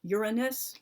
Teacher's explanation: Like they put the stress on the first syllable